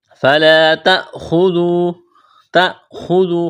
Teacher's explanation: خا کو موٹا کرنا ہے، واو مدہ ہے، ایک الف کے برابر کھینچنا ہے